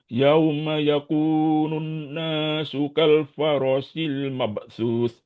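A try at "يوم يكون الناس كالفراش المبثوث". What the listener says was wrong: Faro panjang. Di sini juga panjang. Di sini panjang. Yauma yakunun nasu kal farashil mabthus.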